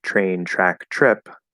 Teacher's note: And the comment was, so in words like train, track, trip, the pronunciation starts with CH plus R instead of T plus R